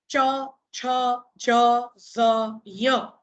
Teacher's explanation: ચ બોલો એટલે જીભનો વચ્ચેનો ભાગ ઊંચો થઈ અને આપણે જેને ખરેખર તાળવું કહીએ ત્યાં આ અવાજ આવે, કઠણ તાળવું, તો એને જઈને સ્પર્શે છે અને ધ્વનિ પેદા કરે છે. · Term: તાલવ્ય વ્યંજન